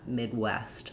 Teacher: using an unreleased D, stopping the air, and then restarting for the W of West is how we would actually do that.